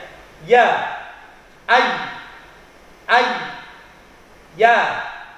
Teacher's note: Huruf ya sama keluarnya dari tengah lidah. Jadi lidah kita sedikit ke atas, tapi tidak menempel seperti huruf jim dan shin.